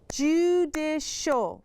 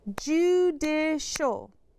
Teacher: Do you hear how that last syllable makes a sh sound?